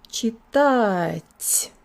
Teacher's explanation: My tongue is moving forward within the second syllable, and I'm putting lots of air through. It's called aspiration.